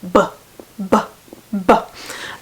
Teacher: Plosives, or stops, where a sound kind of explodes outwards. So we're going to start with bilabial, and within each category you have a voiced version and a voiceless. · you know that I am putting on a schwa sound at the end, the that is a vowel sound, and it's really hard to do a plosive, well actually any of these, without that sound. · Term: bilabial stop